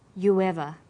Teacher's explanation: You ends with oo, a high back vowel, so it links with linking type 2, the W sound.